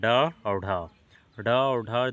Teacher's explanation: ड और ढ ड और ढ द्विगुण व्यंजन कहलाते हैं क्योंकि इनके उच्चारण में जीभ पहले ऊपर उठकर मूर्धा को छूती है और फिर झटके के साथ नीचे आती है